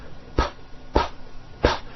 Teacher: your vocal cords are not producing a sound